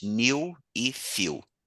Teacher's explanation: esse E com W no inglês se pronuncia, assim, fazendo uma aproximação, né? Como se fosse um ditongo I com U, IU, digamos assim.